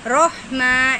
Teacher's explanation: ہے کو حلق کے بیچ سے ادا کریں گے